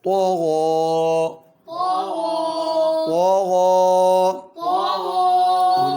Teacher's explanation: اس میں طو بھی موٹا پڑھنا ہے، غین بھی